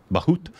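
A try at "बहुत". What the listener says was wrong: Boot. You said Bahut. But that's good, because that's what I would do, too, because there's so many of those H and guttural and nasal things that We don't do.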